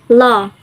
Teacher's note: voiced alveolar lateral approximant